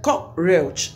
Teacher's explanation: You lay emphasis on the first syllable, which is cock.